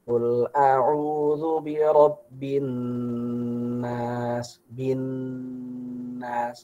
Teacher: Jadi nun dan mim yang bertasydid, maka kita baca dengan gunnah.